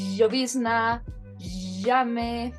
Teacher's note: Ahora, la principal diferencia entre la y y la sh es que la y es una fricativa palatal sonora. Es decir, que si nosotros colocamos nuestra mano en nuestras cuerdas vocales, vamos a sentir una ligera vibración.